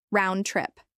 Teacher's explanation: This is pronounced with equal stress on both words.